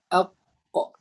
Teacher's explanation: Tapi di bahagian dalam tu dia melekat dengan kita punya tekak ini, maka kita tekan atau tolak dia ke atas sampai kita boleh menyebutkan huruf qaf, iaitu pangkal lidah angkat ke langit-langit berdekatan dengan anak tekak. Maka kita akan gerakkan, kita akan tekan bahagian pangkal lidah ni ke atas.